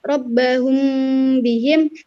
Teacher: Sebab dinamakan ikhfa yaitu karena mim sukun dibaca samar jika bertemu dengan huruf ba. Dan dinamakan syafawi karena makhraj dari huruf hijaiyah mim dan huruf hijaiyah ba keluar pada pertemuan antara dua bibir atau syafatain, yaitu bibir bawah dan bibir atas. Cara membaca hukum bacaan ikhfa syafawi yaitu dengan menyamarkan suara mim mati yang ditahan selama 2 harokat, 2 ketukan atau 1 alif.